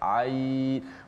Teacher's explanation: Ain, cuma pada ain ni kita boleh baca dengan 4 harakat jugalah. Kalau tak boleh baca 6, boleh baca 4 sebab dia nisbah kepada maklin.